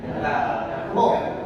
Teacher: Dan khusus huruf ro ini satu-satunya huruf yang boleh dibaca dengan bergetar.